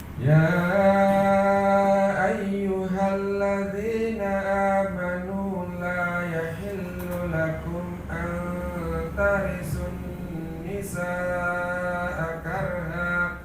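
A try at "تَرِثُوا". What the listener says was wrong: Coba tarithu, thumnya lebih ke ujung.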